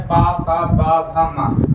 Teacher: पा पा बा भा मा, तो हमारे ओठ आपस में मिल रहे हैं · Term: ओष्ठ